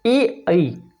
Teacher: कंठ तालव्य वर्ण ए आई हम बोलने की कोशिश करते जब ए आई तो अंदर से आवाज़ आती, कंठ से आवाज़ निकलेगी और जीभ तालव्य के ऊपर जाएगी।